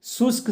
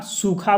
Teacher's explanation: शुष्क शब्द के क अल्प प्राण व्यंजन के महाप्राण ख में परिवर्तन द्वारा सूखा बन गया।